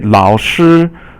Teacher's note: Lao is third tone, and 师 is first tone.